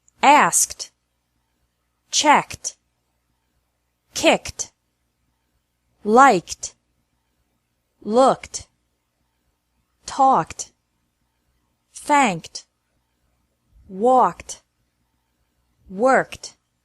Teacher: e is pronounced like T after verbs ending with a k sound